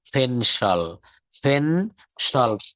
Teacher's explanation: পিটাকে তারা কিন্তু ফ বলছে, প বলছে না কিন্তু